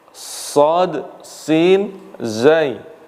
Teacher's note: Sama-sama ada safirnya, yang membedakan nanti zai ini dia ditahan nafasnya, sedangkan sad dan sin dia lepas nafas